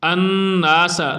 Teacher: نون پر شد ہے اس لیے یہاں پر غنہ کریں گے